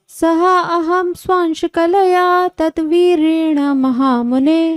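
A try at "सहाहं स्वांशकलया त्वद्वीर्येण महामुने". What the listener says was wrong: तद नहीं, ये त्वद है। सहाहम स्वांश कलया त्वद्वीर्येण महामुने।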